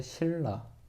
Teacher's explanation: 니은 플러스 리을일 때 리을 리을로 바뀐다고 그죠? 그랬을 때 신라 라고 발음 나죠. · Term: 유음화